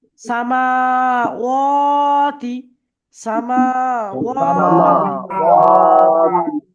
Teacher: তাহলে এখানে প্রথম অক্ষরটা এবং শেষের অক্ষরটা তাড়াতাড়ি পড়তে হবে। মাঝখানে দুটি অক্ষরের উপরে খাড়া জবর আছে, সেই দুটি অক্ষর টান দিয়ে পড়তে হবে।